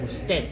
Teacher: hay gente que dice usted sin la D